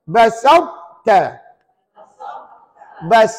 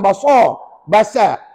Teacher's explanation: huruf ta dibaca tebal tetapi tidak melantun